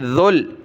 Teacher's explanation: ذال کو لام کے ساتھ ملانا ہے، ذال پر زبان نکالیں